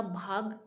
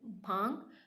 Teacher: देखो, भाग कहते हैं ना हम, कौन सा भाग है, तो अब भाग तो हम डायरेक्ट बोलेंगे। अनुनासिकता यानी जो हमारी नाक के अंदर से बोला जाएगा।